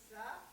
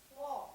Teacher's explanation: अगर स्वाद को मोटा करना है तो जबान के दरमियानी हिस्से को उठाकर मुंह गोल करके पढ़ना है।